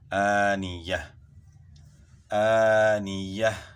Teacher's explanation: تو آنیتین وقف میں آنیہ، آخر میں ہا کی آواز آئے گی. کون سی ہا ہے؟ ہائے ساکنہ، یعنی جزم والی ہا کی آواز آئے گی